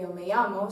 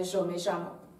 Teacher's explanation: se pronuncia la doble L y la Y como ya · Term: yeísmo